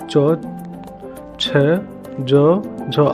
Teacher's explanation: तालव्य का उच्चारण आपको तालु मुंह के भीतर छत का पिछला भाग, मुंह के भीतर छत का पिछला भाग का प्रयोग किया जाता है।